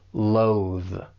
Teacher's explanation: it's just the one syllable, but make sure you're using that voice TH at the end.